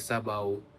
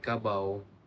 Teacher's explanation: kebanyakan kampung-kampungan di negeri Melaka masih lagi menggunakan bunyi diftong AU